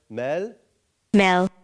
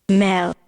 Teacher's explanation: modal kind of regular Voice versus breathy voice is used to distinguish words